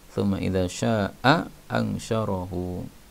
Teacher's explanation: hamzah ketemu hamzah, maka boleh dibaca satu hamzah